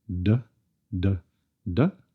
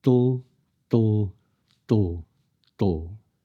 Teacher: The same with the voiced version. Build up the pressure and let the sound release over the sides of the tongue with the tip staying in place. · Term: laterally released